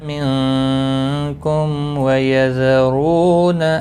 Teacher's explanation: میم ساکن کے بعد واو ہے، اظہار شفوی ہوگا · نون ساکن کے بعد حروف اخفا کا کاف ہے، اخفا حقیقی ہوگا